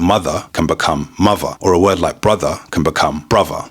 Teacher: th in the middle of a word can also be changed to a v.